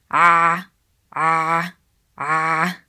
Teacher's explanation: That's where ain sound comes from, the middle part of throat.